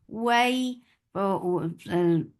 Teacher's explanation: this is harf lean, so make it soft and make it 2 counts long